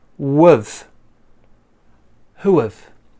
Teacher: the h disappears and we join this o sound and this uh sound how do we join that as two vowels right but actually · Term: a w sound